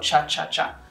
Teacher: explosion and it's a palatal sound that is a release so there's both a plosive component and a fricative component · it does almost a plosive and then it goes into the there's an explosion and it's a palatal sound that is a release so there's both a plosive component and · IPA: tʃ